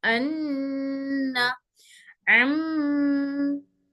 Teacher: ये नाक से निकलने वाले हरूफ है जिनमें हवा नाक के रास्ते से निकलती है। अन्ना, अम्मा, नाक के रास्ते से निकल रही, इसलिए नाक में आवाज जाके वहां पर घूम के फिर बाहर आ रही आवाज। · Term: गुन्ना